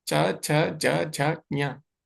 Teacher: तो ऊपर के दांतों के पीछे स्पर्श हो रहा है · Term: तालु